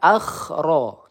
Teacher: berdekatan makhraj kho dengan ro